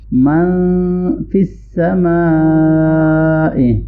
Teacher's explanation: یہاں پر بڑی مد ہے، اس کو زیادہ لانگ کریں گے ہم